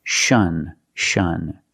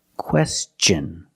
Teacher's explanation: Normally when you see T-I-O-N, the T is pronounced with the soft sh sound